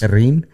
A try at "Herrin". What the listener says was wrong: You got to roll the R's and not pronounce the H.